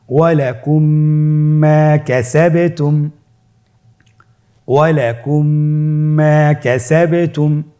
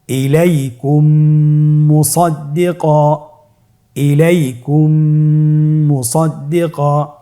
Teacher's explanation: মিম সাকিনকে পরবর্তী মিমের সাথে মিলিয়ে পড়তে হবে গুণনার সহিত